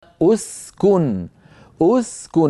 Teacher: لاحظوا بانهم ضموا الهمزه لان الكاف مضمومه اسكن فالكاف مضمومه وهي الحرف الثالث فضم همزه الوصل عند البدء